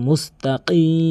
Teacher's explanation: উচ্চারণকে কাফের উচ্চারণ করে ফেলে এখানে কাফের উচ্চারণ করা যাবে না কফের উচ্চারণ জিহ্বার গোড়া থেকে উপরের তালুর সঙ্গে লাগিয়ে কফের উচ্চারণ করতে হবে